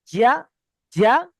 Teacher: দেখুন, জিভের মাঝখান উপরের তালু থেকে উচ্চারণ হয় জিম